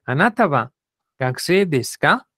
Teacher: un estudiante Entonces yo le agrego un k al final y lo digo con con entonación de pregunta